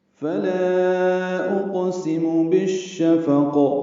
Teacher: فلا میں لام مد منفصل ہے، الف مدہ کے بعد حمزہ دوسرے کلمے میں ہے. اقسم میں قاف ساکن ہے، اس پہ قلقلہ ہے. سین میم جلدی اور معروف پڑھیں گے. · بالشفق میں با کو شین سے ملانا ہے، ادغام شمسی ہے